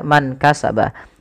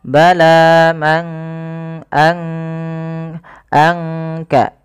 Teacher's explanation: disamarkan suara nunnya kepada huruf Kaf manka Anka langsung kepada makhraj daripada huruf Kaf itu sendiri bal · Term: Ikhfa